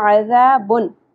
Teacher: ایک چیز آپ کو ریمائنڈ کرانی ہے جو کہ ہم نے پچھلے لیسن میں بھی پڑھ لی تھی کہ تنوین کے بعد یہاں پہ حمزہ آ گیا، تو حروف حلقی میں سے حمزہ آ گیا، اس لیے یہاں پہ ہم تنوین کی آواز کو چھپائیں گے نہیں بلکہ ظاہر کر کے پڑھیں گے